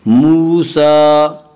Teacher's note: وا مدہ وہ واو جو ساکن ہو اس سے پہلے پیش ہو، وا مدہ کو ایک الف کے برابر کھینچ کر پڑھیں گے